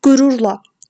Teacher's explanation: Vurğu rura, yəni ikinci hecəyə düşür.